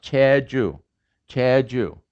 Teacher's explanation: that's voiceless at the beginning and it's voiced in the middle